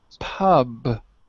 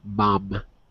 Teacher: So there's no real difference between pub and mom, except pub you blow out, so it's plosive. Mom, the sound goes through your nose.